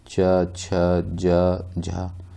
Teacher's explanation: स्पर्शिता संघर्षी व्यंजन किसे कहते हैं, जब मुख द्वारा बहुत को बंद करके इस प्रकार बोलते हैं कि हवा स्थानों को कुछ रगड़ती हुई निकलती है